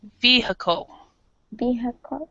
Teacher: we actually don't pronounce the I. It's kind of a schwa sound, so we say vehicle.